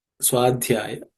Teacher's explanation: That ud is a fourth letter in the third varga, so it has to be aspirated.